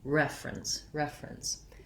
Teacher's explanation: Rather than refer or reference, we tend to reduce that down to two syllables.